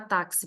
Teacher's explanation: na palavra táxi por exemplo nós temos quatro letras mais cinco fonemas porque o X tem som de KS